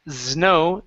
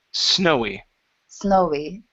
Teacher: instead of saying znow snowy with a z sound it's an unvoiced S snowy snowy